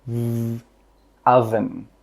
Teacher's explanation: With that V sound, your throat should vibrate.